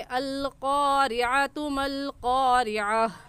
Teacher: गोल ता पर जब हम वक़्फ़ पढ़ते हैं तो वक़फ़ की सूरत में वो हा बन जाती है, तो हम पढ़ेंगे अल क़ारिअतु मल क़ारिअह।